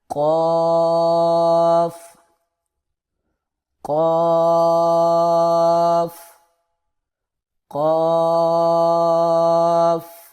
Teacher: زبان کی جڑ کو منہ کے اندر جو کوا ہوتا ہے اس کے اوپر جو متصل تالو ہوتا ہے ساتھ، وہاں پر لگا کر موٹی آواز میں پڑھنا ہے